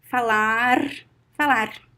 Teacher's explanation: this R, the fricative R, it is more common in São Paulo and southeast and south of Brazil.